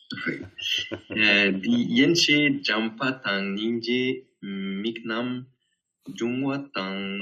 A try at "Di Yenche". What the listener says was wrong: Di Yenche. Là tu fais une pause. Di Yenche, parce que ça veut dire jusqu'à là. Di Yenche. Ça, c'est deux mots pour dire jusqu'à là, comment dire, à partir de là ou jusque-là.